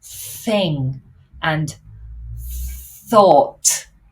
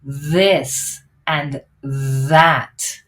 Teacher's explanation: both of these are produced with the tongue between the teeth but the top one is voiceless it's just air like thing and thought and the bottom one is voiced so